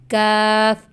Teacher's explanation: زبان کی جڑ اور تالو کا سخت حصہ، یعنی تالو کا درمیان والا حصہ اور تالو کا آخر والے حصے کے درمیان والے حصے میں سے کاف ادا ہوتا ہے